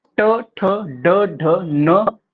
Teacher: जीभ के अग्रभाग के द्वारा मूर्धा यानी तालु का बीच वाला ऊपर का कठोर भाग को स्पर्श करने से होता है वे मूर्धन्य व्यंजन होते हैं